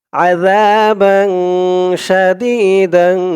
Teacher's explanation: 15 হরফ আমি বললাম সেই 15 হরফের যেকোনো একটি হরফ আসলেই সেখানে ইকফাহ অর্থাৎ নাকের ভিতরে লুকিয়ে গুন্নাহ করে পড়তে হয় এখানে দেখুন তানবিনের পরে ইকফার হরফ সিন আসছে গুন্না হয়েছে বা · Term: ইকফা গুন্না